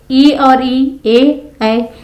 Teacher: जीभ के आगे के भाग से उच्चारित होने वाले स्वर अग्र कहलाते हैं। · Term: अग्रस्वर